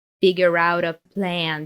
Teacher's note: and there is a connected speech here figure out a plan because the T from out is between two vowels it turns into a flap T